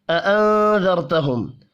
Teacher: نون ساکن کے بعد ذال ہے، اخفاء حقیقی ہوگا. را ساکن سے پچھلے حرف کے اوپر زبر ہے اور را کو پر پڑھیں گے.